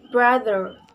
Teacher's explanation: brother has the main stress at the beginning of this word